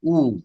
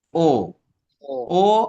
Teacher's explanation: উ বলতে ঠোঁট যেমন হয় উ, ও বলতে কি তার থেকে একটু কম কুচকে না, ও ও ও আর উ, খেয়াল করেছো? উতে ঠোঁট একেবারে চোখা হয়ে আসে, আর ও বললে গোল হয়।